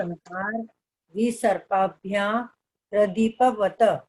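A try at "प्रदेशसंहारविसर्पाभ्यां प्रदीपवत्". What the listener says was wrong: वत नहीं बोलना है, वत तो आधा तोड़ा हुआ है, आधा है, उसको प्रदीपवत ऐसा बोलना है।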